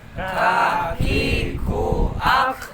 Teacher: cara pengucapan huruf kaf, yaitu pangkal lidah bagian atas